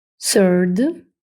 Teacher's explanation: яке може давати як дзвінки звук з так і глухий с в даному випадку у нас глухий с